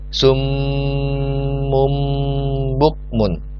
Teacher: bacaan nun mati atau tanwin nya seperti diganti menjadi Bunyi mim contoh disini sub on the move on ya di sini tanwinnya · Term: iklab atau mengganti